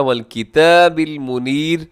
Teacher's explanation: یہاں پہ را کو باریک پڑھنا ہے کیونکہ اس سے پہلے یا ساکنہ ہے